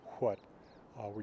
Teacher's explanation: sounds roughly like older American English what where you actually have that H pronounced